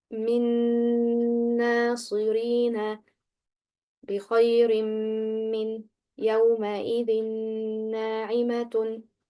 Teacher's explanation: the ghunnah pronounced is the ghunnah of the following noon and mim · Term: complete idgham